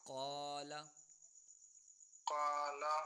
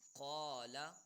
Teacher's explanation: الف ویسے باریک ہے، کاف دو نقطے والا موٹا ہے، تو اس کی وجہ سے اب پورے کا پورا حرف قا موٹا ہو رہا ہے